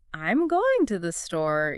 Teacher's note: with regular statements like, I'm going to the store, your voice tends to go down at the end as well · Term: falling intonation